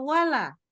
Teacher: lam yang di depan wala itu ikutan tebal.